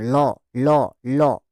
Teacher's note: উদাহরণ হচ্ছে ল, প্রচন্ড পরিমাণে ইম্পর্টেন্ট, ল, ল, ল, দেখো ল উচ্চারণ করো, দেখো জিভটা উপর দিকে উঠে নিয়ে দুপাশ দিয়ে বাতাস বার হয়ে যাচ্ছে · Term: পার্শ্বিক ব্যঞ্জন